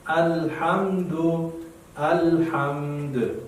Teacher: الحمد دال چې ساکن شي نو قلقله باید پکې وکړو